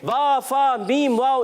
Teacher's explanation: जब होंठ मिलते हैं या होंठ गोल होते हैं तो ये हरूफ अदा होते हैं। तो इनकी अदायगी हमेशा होंठों से होती है। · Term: हुरूफ़े शफविया